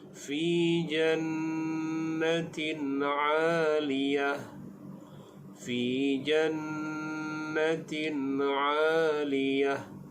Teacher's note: Pada nun yang bersyaddah dibaca dengan dengung wajib al-ghunnah. Tin a menjadi hukum izhar halqi, aliyah ha diwaqafkan dengan ha.